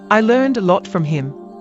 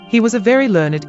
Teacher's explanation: we say that word in one syllable in the sentence I learned a lot from him but pronounce it as two syllables in he was a very learned